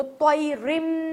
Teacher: تنوین کے بعد یرملون میں سے ایک حرف آ گیا، یرملون، یا را میم لام واو نون، ان میں سے کوئی حرف آ گیا تو طیرم، رن نہیں پڑھا ہم نے، طیرم پڑھا